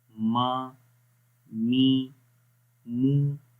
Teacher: میم زبر ما. تو جب میم کو پڑھتے ہیں تو آواز ناک کے اندر بھی تھوڑی سی گونجتی ہے. ٹھیک ہے، تو اس وجہ سے اس کی آواز ناک میں بھی رہے گی اور ہونٹوں سے بھی.